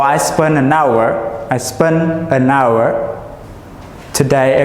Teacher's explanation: the word hours, so we don't have the sound of H